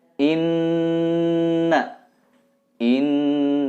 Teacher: Ini adalah gunnah, nun bertasydid. Tahan 2 atau 3 harokat dan didengungkan.